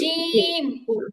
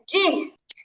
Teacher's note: উচ্চারণ হবে জিহ্বার মাঝখান উপরে তালুর সঙ্গে লাগবে, জিহ্বার মাঝখান উপরে তালুর সঙ্গে লাগবে।